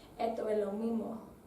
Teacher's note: hay a veces la aspiración de la S también, que por ejemplo, esto es lo mismo, se pronunciaría como esto es lo mismo, que lo hace más difícil entender al inicio.